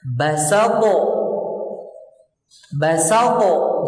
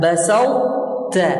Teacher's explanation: dengan mengeluarkan huruf ta dari makhrajnya tanpa diqalqalahkan, karena menurunkan pangkal lidah untuk menyebut huruf ta. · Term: idgham naqis